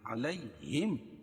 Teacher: یا لین ہوگا، اس کو نرم آواز کے ساتھ جلدی پڑھیں گے